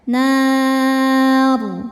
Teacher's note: saat berhenti rnya ini disukunkan dibaca secara tafkhim · Mad tabi'inya alif didahului fathah, huruf yang disukunkannya ro. Maka nunnya panjang, boleh 2 atau 4 atau 6 harokat asal konsisten dalam satu kali baca. Nar. Dan saat berhenti ro-nya ini disukunkan, dibaca secara tafkhim. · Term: mad arid li sukun